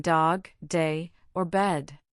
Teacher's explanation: Its name is D, and it makes that familiar sound as in dog, day, or bed. You create this sound by placing the tip of your tongue against the ridge behind your upper teeth, building up a bit of pressure, and then releasing it with your voice engaged. This is the voiced counterpart to the T sound.